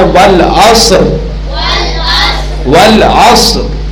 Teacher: ہلکا زبان ہلکی سی را کو ٹچ ہونی ہے بس. صاد کو بھی ساکن پڑھنا ہے اور را کو بھی ساکن پڑھنا ہے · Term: دو ساکن